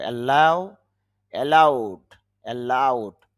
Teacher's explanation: লাউ এর মাঝে চাপ দিতে হবে